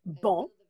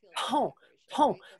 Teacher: c'est juste une question de vibration dans les cordes vocales